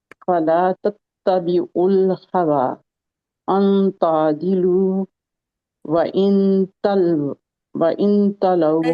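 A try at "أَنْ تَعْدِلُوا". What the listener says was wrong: ये देखे अंता आदिलू नहीं है, इसको देखे आइन को ठीक करें।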